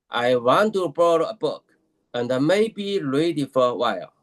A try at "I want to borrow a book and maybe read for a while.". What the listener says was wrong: Not ready. I heard it as ready for a while. Not ready. Read for a while. Read for a while.